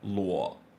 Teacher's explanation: just drop your voice low for third tone until it's like the base voice